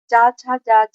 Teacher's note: च छ तालव्य होते हैं। ये स्पर्श संघर्षी भी कहलाते हैं। त थ द धंत व्यंजन होते हैं।